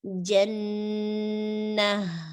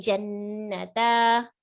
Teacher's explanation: But here, what happens is when you stop here, you do not make it alif mad. What you do is you make it ha with a sukoon. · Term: ha sakina